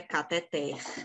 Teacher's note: pois a língua portuguesa diz que o correto é cateter é uma oxítona a sílaba tônica é o ter